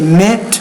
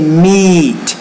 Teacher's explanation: if you say mit, that's more of a lax vowel. If you say meat, that's a tense vowel